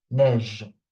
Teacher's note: Again, here I'm not saying neiger or neigeux. The E at the end, I'm not pronouncing it, I'm stopping at the G sound.